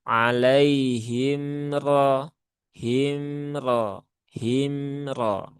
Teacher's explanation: Yang mana mim itu sifatnya salah satunya adalah tawasut. Maka jangan ditekan. Dia bukan syiddah. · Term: izhar syafawi